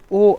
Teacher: और कंठोष्ठ से ओ औ बोले जाते हैं